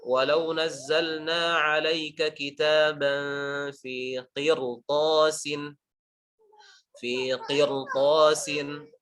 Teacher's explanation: Asalnya harusnya dibaca tipis. Tapi setelahnya ada huruf to yang tebal. Maka dia dibaca tebal. Huruf ra-nya dibaca tebal.